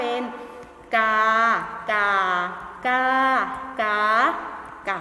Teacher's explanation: ก็จะได้เสียงสามัญเอกโทตรีจัตวา